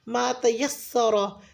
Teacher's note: रॉ को पुर पढ़ेंगे क्योंकि ज़बर के साथ है।